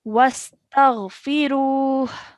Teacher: So a slight h sound at the end.